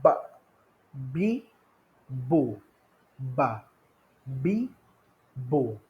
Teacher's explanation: Yang kedua huruf ba, merapatkan dua bibir.